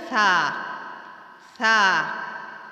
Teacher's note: ثا میں ذرا برابر سیٹی کی آواز نہیں آنی چاہیے۔ اگر سیٹی کی آواز آ گئی تو یہ سین کے ساتھ مل جائے گا